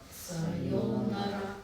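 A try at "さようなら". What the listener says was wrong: Okay, the RA at the end, please don't pronounce it as ra. Okay, we are not Americans or Australians. Sayonara, right? We are not Australians. So sayonara. Right, so there's a OU sound in the middle as well.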